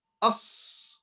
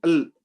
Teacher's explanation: Like us, the sound continues, like a whistle. The sound continues. Al, the sound doesn't continue. Al, finished, done.